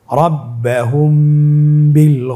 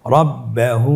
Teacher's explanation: এখানে দুই ঠোট মিলিয়েও পড়া যায় এবং দুই ঠোট ফাঁকা রেখেও পড়া যায়।